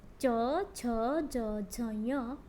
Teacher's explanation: आपकी जो जिह्वा है वह ऊपर स्पर्श करती है तालु को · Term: च वर्गीय